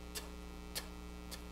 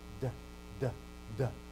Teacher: point of articulation, and then no vocal cords, point of articulation, vocal cords